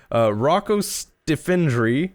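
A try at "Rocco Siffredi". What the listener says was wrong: No. You got to go back to Rocco. You put some extra letters and syllables in there. Sifredi? But you were like Sinfredo.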